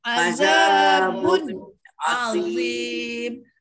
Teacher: Walaupun tanwin itu bertemu dengan ain, pada hakikatnya kita kata tidak dengung. Tapi oleh kerana bun tu, bun tu, bun atau kalau Jawi dia ba nun, ada je huruf nun, maknanya adalah sifat dengung. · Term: izhar harfi